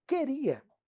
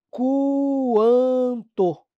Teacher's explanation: o u não é pronunciado